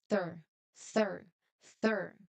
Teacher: First here we must use the th sound at the beginning voiceless th sound where your tongue touches the teeth or your teeth and try to say the first part th.